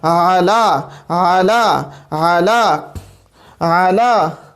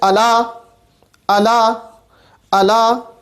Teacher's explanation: عین ہمارے پاس وسط حلق سے ادا ہوتا ہے